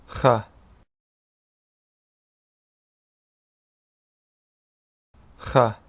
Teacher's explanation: a deep pharyngeal fricative. This is a sound made in the back of your throat.